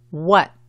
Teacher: Recuerda, como aprendiste en lección número 1, muchas veces nosotros los gringos no pronunciamos la T cuando es al final de la palabra. Tienes que prolongar o extender la pronunciación de la A y a veces se escucha la U un poco antes de la A.